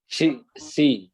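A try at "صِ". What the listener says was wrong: তাহলে এই সি আর এই সি এক হয়ে গেল না? এই জন্য সদের উচ্চারণ সি বলতে হবে, আগে মুখটা গোল করে নিতে হবে, সি। আর সিনের উচ্চারণ সি। সিনের উচ্চারণ বরাবর সি হবে, আর সদের উচ্চারণ আগে মুখ গোল করে নিতে হবে, না হলে এই সি, সুই, সুই।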